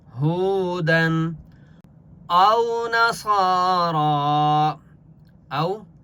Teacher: یہ واو لین ہے، اس لیے ہم نے حمزہ کو کھینچنا نہیں ہے